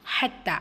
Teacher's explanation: அல்லாஹ் சூரத்தருடைய இரண்டாவது வசனம் ஹத்தாமுல் ஹத்தார்த்துமுல் மகாபிர் ஹத்தா ஹா லைட்டா உச்சரிக்கணும் தால சத்தா இருக்கு அழுத்தம் கொடுக்கணும் கூடவே அலிஃப் சகிரா இருக்கு இரண்டு ஹரக்கத் அளவு நீட்டம் கொடுக்கணும் ஜுர்த்துமு ரா